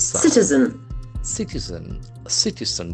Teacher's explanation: The accent falls on the first syllable.